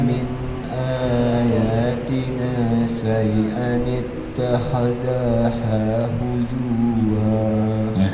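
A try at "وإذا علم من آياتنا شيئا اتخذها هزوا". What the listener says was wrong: Jangan dipanjangkan. Kalau yang pendek jangan dipanjangkan kan dong. Wa idza 'alima min ayatina syai'an ittakhadhaha.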